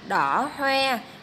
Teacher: Các em lưu ý vần oe của tiếng hoe, mình đọc tròn môi